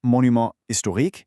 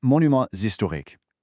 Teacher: In French, when a word ends in an S and the very next word begins with a silent H or a vowel, we do this thing called a liaison. Basically, we link them together with a Z sound. So, it's not monument historique, it's monuments historiques.